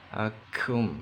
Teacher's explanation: Kafnya hamas berdesis, keluar nafas.